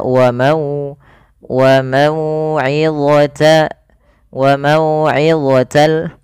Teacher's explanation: baca Nin ketika huruf ya didahulukan dengan fathah maka cara membacanya sempurnakan daripada makharij huruf wau dengan memonyongkan bibir kita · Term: bacaan Lin